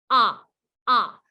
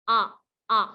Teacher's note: says ah ah look how round my mouth is ah and my tongue is really flat and the sound is coming out from the back of my throat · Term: short o